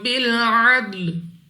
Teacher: दाल कलकला में से है, तो जब हम इसको अदा करेंगे हमारे मखरज में जुम्बश सी होगी। मुराद क्या है कि हमें अपनी आवाज वापस लौटती हुई सुनाई देगी।